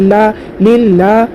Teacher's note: لفظ اللہ کے لام سے پہلے لام کے نیچے زیر ہے، لفظ اللہ کے لام کو باریک پڑھیں گے